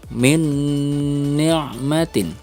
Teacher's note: nun sukun bertemu dengan huruf nun harus ada dengung di sini